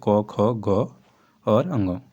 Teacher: जिनका उच्चारण कंठ अर्थात गले से होता है वे व्यंजन कंठ व्यंजन कहलाते हैं। इन्हें कोमल तालव्य भी कहते हैं।